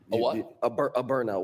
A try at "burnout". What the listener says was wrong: too fast. Burnout. You're saying it too fast.